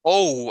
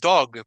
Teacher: estamos hablando que hay un ou ahí verdad no es igual que dog porque dog es más cortito solo hay un sonido